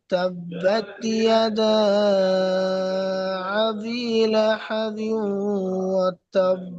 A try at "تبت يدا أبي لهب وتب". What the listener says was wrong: এই হামজাটা হামজাটা একটু হামজা ভাবে হামজা মতন উচ্চারণ করে পড়েন।